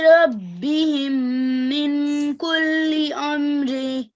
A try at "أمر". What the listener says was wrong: Okay, so you don't have to say amri. You can say amr.